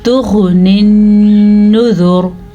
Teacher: नुज़ूर नहीं पढ़ना आपने, अक्सर लोग नुज़ूर पढ़ लेते हैं, ज़ाल के बाद वाव नहीं है। अच्छा जी, नून के ऊपर शद की वजह से नून पे गुन्ना होगा